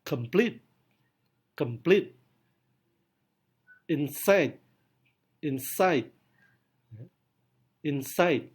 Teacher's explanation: Pada tipe kedua, silabel pertama tidak mendapatkan stres, tetapi silabel kedua mendapatkan primary stress. Berarti silabel kedua mengalami penekanan lebih kuat.